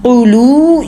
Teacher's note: قلو، یہ تو آپ نے ایک ہی گولائی سے ادا کرنا ہے، ایک ہی دفعہ ہونٹ گول کیے قاف کی پیش کے لیے، اسی سے لام کی پیش بھی ادا ہوگی، واو مد بھی ادا ہو گیا